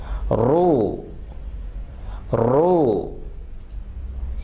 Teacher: را کے اوپر کوئی بھی حرکت آ جائے تو را فل ماؤتھ ہے, موٹی آواز سے پڑھا جائے گا